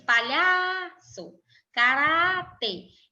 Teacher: em ambas essas palavras a penúltima sílaba é a sílaba mais forte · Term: paroxítonas